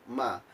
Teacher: tempat keluar hurufnya yakni di bibir dengan menutup kedua bibir dua bibir tertutup